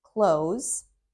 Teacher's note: close, where the s makes that z sound